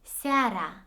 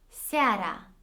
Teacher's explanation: Only a is a full vowel, which means that as the prominent sound, it is going to be pronounced fully, whereas e is a semi-vowel. That is why you can hardly hear it, and it is so faint.